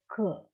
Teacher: we take the letter k, k, so we don't get any vibration. Okay, k is a consonant, and when you pronounce k, is a voiceless.